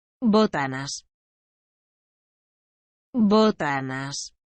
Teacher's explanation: the accented syllable is on the first